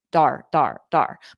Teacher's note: I take that t and it becomes more of a soft D sound D but then I pronounce or I connect it to R